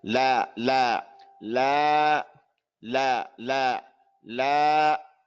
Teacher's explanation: It's equal of two harakas. Is equal to fatha twice.